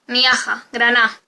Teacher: Caída de oclusivas sonoras intervocálicas